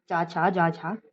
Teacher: चा छा जा झा जो है वो स्पर्श संघर्षी ध्वनियां कहलाती हैं